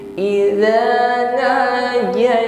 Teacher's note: ditekan huruf ra bertasydid, nampak sifatnya takrir. Nah, irti'adu tarfulisan ya, getaran pada ujung lidah.